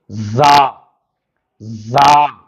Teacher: یہاں پہ ہم زال کی طرح سے زبان باہر نہیں نکالیں گے